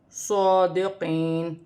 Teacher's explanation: صاد پر کھڑی زبر ہے، ایک الف کی مقدار کھینچ کر بھی پڑھا جائے گا اور صاد کو اپنے مخرج سے موٹا پڑھا جائے گا۔ یا ساکن سے پہلے زیر ہے تو یا مدہ بنے گی، وقف کی صورت میں زبر گر جائے گی اور نون ساکن ہو جائے گی۔